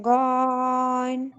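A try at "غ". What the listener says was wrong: গইন না, গই বলে তারপরে টান দিবেন, গইন।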